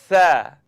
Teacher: So it's the tip of my tongue coming up out at the edge of my top teeth. Now I'd just like you to simply blow the air between your tongue and your teeth.